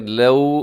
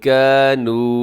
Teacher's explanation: لو میں بھی آپ نے یہاں پہ واو لین ہے، خیال کرنا ہے، اور کانو یہاں آخر میں واو مدہ ہے، تو آپ یہاں سمجھ سکتے ہیں کہ واو لین اور واو مدہ یہاں دونوں ساتھ ساتھ آ رہے ہیں، تو دونوں میں ڈفرنس کیا ہے۔